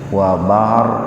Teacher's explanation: huruf ro sukun didahului oleh fathah, jadi ro-nya dibaca tebal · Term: tafkhim